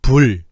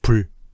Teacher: 선생님이 1번은 초성비읍을 유성음으로 발음했고 2번은 초성비읍을 무성음으로 발음했는데 차이가 느껴지니? 당연히 안 느껴지지.